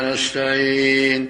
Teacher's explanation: Dalam nasta'in, 'ain hampir hilang, teman-teman.